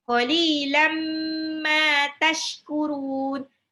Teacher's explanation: Qalilam, lamnya 2 harokat, qali ya, kasroh ketemu ya sukun. Lam tanwin ketemu mim. Tanwinnya lebur ke mim, ditahan 2 sampai 3 harokat, idgham bi gunnah.